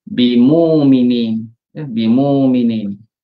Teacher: So, yang pasangan kepada baris depan ini huruf waw. Dia baca dengan tukarkan Hamzah jadi waw, maka baca bimuminin.